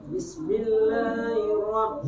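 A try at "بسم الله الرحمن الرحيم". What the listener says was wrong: Hi-nya tarik. Hir. Tasdid. Hirrahma. Ro-nya tasdid sudah. Bismillahirrahmanirrahim. Hirro. Hi-nya tarik. Hirro. Nirro. Ni-nya tarik. Nirro. Bismillahirrahmanirrahim. Jadi kan hirrahma, bukan hi tapi kayak hirrahma. Nah, i-nya enggak jelas.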